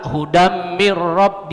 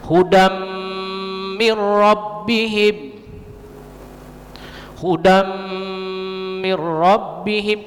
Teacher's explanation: bertemu dengan huruf Ma mirrobbihim Hudan mirrobbihim Jangan pula Huda mirrob dia gunnah dengung ditahan dia 2 harkat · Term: Idgham Bighunnah